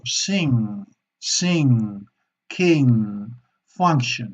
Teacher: vamos a tener que hacer una N donde no llevamos la punta de la lengua hacia arriba, sino que se queda abajo · Porque si vemos el siguiente sonido, que es también una N, velar, una N, velar, es decir, la parte de atrás de la lengua se pliega y toca el paladar más de atrás, el paladar soft palate en inglés.